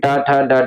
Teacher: इनका उच्चारण स्थान क्या होता है? मूर्धन्य होता है। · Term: ट वर्ग